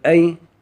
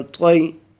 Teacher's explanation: یا لین کو بھی ہم نے کھینچ کر نہیں پڑھنا